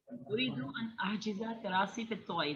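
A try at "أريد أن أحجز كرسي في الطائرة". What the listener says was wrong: کرسی, کرسی, کراسی نہیں کرسی. اریدو ان احجز کرسی فی الطائرہ.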